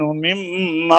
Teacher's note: ساکن کے بعد، نون ساکن کے بعد میم حروف یرملون میں سے آ گیا ہے. اس لیے جب حروف یرملون آ جائیں نون کے بعد تو نون کا میم میں ادغام ہوتا ہے